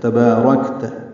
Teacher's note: را پر ہے، کاف باریک ہے، کاف ساکن پہ ہمس ہے